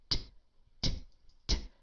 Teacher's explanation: Notice I'm stopping the airflow, I'm stopping the sound, and then I'm releasing it. I'm stopping it and releasing it. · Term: aspirated